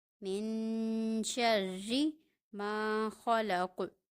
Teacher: من شر ما خلق، من شر ما خلق، را مشدد ہے اور را کے نیچے کسرہ یعنی کہ زیر ہے، یہاں پہ را کو باریک پڑھا جا رہا ہے